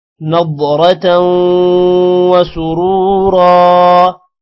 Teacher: ضاد کو موٹا کریں گے، را کو بھی موٹا کریں گے، تاؤں پر غنہ ہوگا.